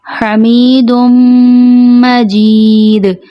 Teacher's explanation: دال کے دو پیش میم کے ساتھ ملائے جائیں گے · دال آخر میں آ رہا ہے تو اس پہ ہم وقف کر رہے ہیں، تو یہاں پہ قلقلہ ہوگا، آواز پلٹ کے واپس آئے گی